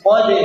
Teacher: Jadi dal ini tipis diapit oleh huruf tebal. Nah, yang jadi keliru biasanya dalnya berubah menjadi tebal. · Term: dal qalqalah